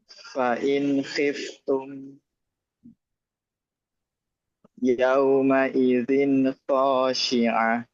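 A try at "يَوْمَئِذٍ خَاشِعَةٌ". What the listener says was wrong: Zin kho. Jangan mantul. Yauma idzin khoshi'ah.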